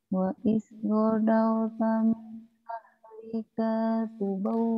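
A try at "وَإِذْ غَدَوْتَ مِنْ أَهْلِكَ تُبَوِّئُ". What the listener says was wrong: Pendek. Kayaknya tadi panjang, min ahlika.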